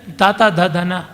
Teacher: ಇನ್ನು ತಾತ ದಾದನ ಹಲ್ಲುಗಳು ನಾಲಿಗೆ ಸೇರಿದಾಗ ಆಗುವುದು.